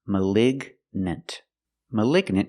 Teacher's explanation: The gn is in the middle. We pronounce the g like a hard g sound.